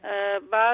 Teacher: बा दोनों होंठों के तर हिस्से को सख्ती से मिलाने से होता है अदा